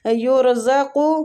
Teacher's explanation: آگے یرزق، ادھر بھی ہم را کو موٹا ہی پڑھیں گے کیونکہ را سے پہلے والا جو حروف ہے اس کے اوپر پیش ہے